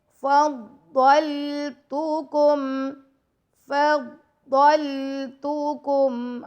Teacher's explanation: فا کو ضاد سے ملائیں گے، ضاد کو لام سے، اور ضاد کو موٹا پڑھیں گے